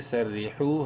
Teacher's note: واو مدہ ہے، حا کو ایک برابر لمبا کریں گے